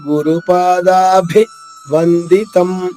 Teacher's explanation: గురుపాదాభి పాద రెండు దీర్ఘాక్షరాలు, భి మహాప్రాణము అంటే ఒత్తుభ